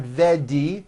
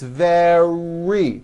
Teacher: the r occurs in the middle of the word it's not a d sound the word is not vedi or vet me it's very make